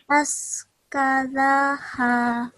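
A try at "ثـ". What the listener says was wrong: Okay, first, this letter here is as, so tongue between your teeth, as, try. So we shouldn't be hearing any s sound. Try saying thank you. Yes, that's the sound you want. So it's a th sound. So we say us. Try. Us, like thank you. Us. Us. And remember, this letter is a thick letter, so we have rounded lips. Us.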